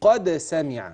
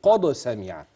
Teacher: قل ما فخم الدال اقول قد سمع ما اقولش قد سمع يبقى اخلي بالي القلقله مرققه مع الدال